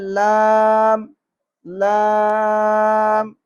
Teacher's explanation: زبان کا کنارہ اوپر کے دانتوں کے مسوڑوں کے ساتھ جب ٹکراتا ہے تو لام ادا ہوتا ہے،